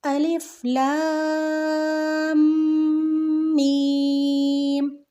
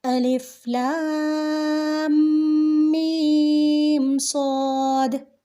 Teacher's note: یہ جتنے بھی حرف ہیں اس لیسن میں جتنے بھی حرف آ رہے ہیں ان میں جو مد لگی گئی ہے، جن حرفوں پہ بھی مد لگی گئی ہے وہ بڑی مد ہی ہے، یہاں پہ چھوٹی مد نہیں لگی ہوئی. تو اس لیے لام اور میم کو بھی میں نے کھینچ کے پڑھا ہے، 3 سے 4 الف کے برابر میں نے کھینچ کر پڑھا ہے